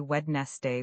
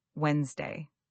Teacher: That middle d is silent and the word compresses into two syllables.